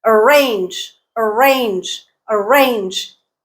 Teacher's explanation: range is the stress syllable